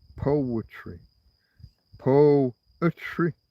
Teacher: The dactil foot. One strong sound and two weak sound.